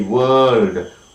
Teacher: Look at the word world, W-O-R-L-D, world, Alright, so you have the sound not with the front, not with the back, it is with the center